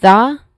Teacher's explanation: uses a voice th sound